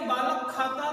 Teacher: का और खा के बीच में थोड़ी सी हा जैसी आवाज आती है। पूर्ण रूप से हा की आवाज भी नहीं आती, लेकिन थोड़ा सा प्रतीत होता है कि हा जैसी आवाज यहाँ पर है। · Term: जिह्वा मूली